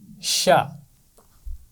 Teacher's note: شین کا مخرج ہے زبان کا درمیان اور اوپر کا تالو، وہاں سے جڑتا نہیں ہے کیونکہ جب یہ ملے گا تو جیم کی آواز نکلے گی، اس لیے تھوڑا سا فاصلہ رکھنا ہے، شا۔